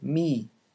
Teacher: the velum dropped down and made the sound nasal this is what makes it possible to hold the sound whereas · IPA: [mi]